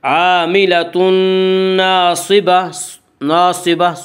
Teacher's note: صاد کو پر پڑھیں گے۔ صاد حروف مستعلیہ میں سے ہے۔